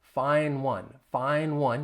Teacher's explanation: You don't hear that duh in find.